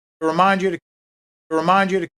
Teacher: Just one important syllable there, and it's mine.